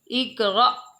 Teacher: ساکن والا حمزہ آیا ہے نا تو اس کو ہم نے پھر جھٹکا لگانا ہے۔ اقرا حمزہ زیر قاف اقرا زبر حمزہ را اقرا۔